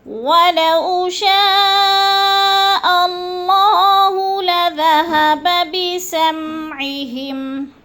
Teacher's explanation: ولو کو لمبا نہیں کرنا، بولین ہے۔